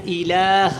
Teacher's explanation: ہا کو لمبا نہ کریں اور الہ کو تھوڑا سا لمبا کریں